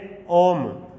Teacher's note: प्लुत स्वर क्या है, जिनको बोलने में दीर्घ से ज्यादा टाइम ले